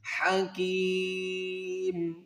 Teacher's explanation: جب یہاں سٹاپ کریں گے یعنی میم ساکن کریں گے اور یائے مدہ کو ہم 3 الف کی مقدار کھینچ کر پڑھیں گے